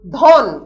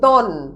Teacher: অর্থাৎ সোজা কথায় মহাপ্রাণ ধ্বনি পরিণত হচ্ছে অল্পপ্রাণে। দ্বিতীয় বা চতুর্থ ধ্বনি পরিণত হচ্ছে প্রথম বা তৃতীয়।